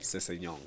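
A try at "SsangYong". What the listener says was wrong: Sisanyong. I thought it was Sanyong. Like you don't say the double S. Sang.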